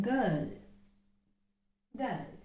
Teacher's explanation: it's a voiced consonant and we have to consider that it is a velar plosive